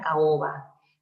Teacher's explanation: Por ejemplo, yo tengo la palabra caoba. Caoba implica una vocal abierta y una vocal abierta. A con O se separan siempre. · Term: hiato simple